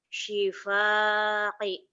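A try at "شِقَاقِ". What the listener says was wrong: Ada titik dua. Bukan si paki. Syuqaqi.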